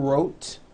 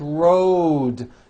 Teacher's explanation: Road also has a voiced D ending. Road. It's not wrote, unvoiced, it's road. The whole word is voiced.